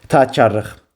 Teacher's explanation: Sondakı cingiltili samit kar samit kimi tələffüz olunur. O da ki, Q samiti X kimi tələffüz olunur.